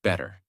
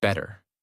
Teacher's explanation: In the first version, your mouth stops more. In the second version, the sound flows more smoothly. That smoothness is the American feeling.